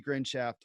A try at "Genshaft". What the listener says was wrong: Genshaft, there's no R.